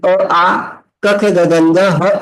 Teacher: काय, आकुह विसर्जनीयानाम कंठः, एवढं पाठ केलं तर तुम्हाला लक्षात येईल अ आ क ख ग ग ह आणि विसर्ग यांचं उच्चारण स्थान कंठ असतं.